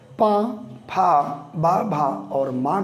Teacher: पा, फा, बा, भा, माँ कहने के लिए हमारे ओंठ जो हैं ये ओष्ठ आपस में स्पर्श करते, आपस में मिलते हैं